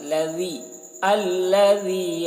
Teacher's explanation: ذال کو باریکی کے ساتھ